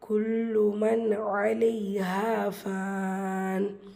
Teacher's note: குல்லு லாம் ஷத்தா அழுத்தம் கொடுத்து ஓதணும். நூன் சுக்குனுக்கு அப்புறமா ஐன் இத்ஹார் உள்ளதை உள்ள மாதிரி ஓதணும், குன்னா செய்யக்கூடாது. அலைஹா இங்கே அலிஃப் மதா 2 ஹரக்கத்தில் நீட்டம் கொடுக்கணும்.